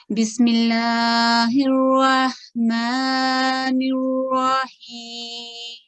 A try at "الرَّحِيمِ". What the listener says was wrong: یہ جو ہے نا ہیم ہیم بس نہیں اس کو گننا کر کے لمبا نہیں کرنا اس کو.